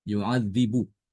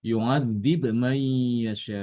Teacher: Adapun Imam Ibnu Katsir dia bacanya dengan mensukunkan huruf ba.